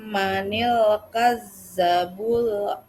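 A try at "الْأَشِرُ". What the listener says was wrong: Bukan lasir. Asir. Manil kadzabul asir.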